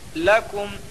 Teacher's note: لام کے اوپر زبر کی حرکت ہے، زبر کو جلدی پڑھیں، تھوڑا بھی نہ کھینچیں، زبر کی آواز اوپر کو اٹھتی ہے۔ لکم، کم میں اظہار شفوی ہوگا۔